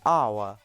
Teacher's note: which is composed of the diphthong /aʊ/ + the vowel sound /ə/ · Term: triphthongs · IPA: /aʊə/